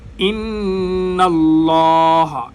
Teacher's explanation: لفظ اللہ کا لام موٹا ہوگا